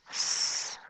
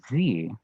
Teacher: And that's a very big distinction in languages, and we call that voicing. So S is a unvoiced sound, and Z is a voiced sound.